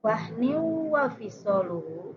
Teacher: kasrotain menghadapi wau itu jadi idgham digunah